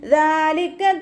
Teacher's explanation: ذَلِكَ تَخْفِيفٌ مِّن رَّبِّكُمْ ദാൽ ഉച്ചരിക്കുമ്പോൾ ലൈറ്റാക്കിയിട്ട് ഉച്ചരിക്കുക. മഖ്റജ് വരുന്നത് നമ്മുടെ നാവിൻ്റെ അറ്റവും മേലെ മുൻപല്ലിൻ്റെ അറ്റവും ചേർന്നിട്ടാണ്. ദാലിൻ്റെ സൗണ്ടായി പോവാതെ നോക്കുക കേട്ടോ.